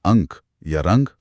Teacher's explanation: अनुस्वार का उच्चारण करते समय हवा नाक से अधिक निकलती है और मुख से बहुत कम,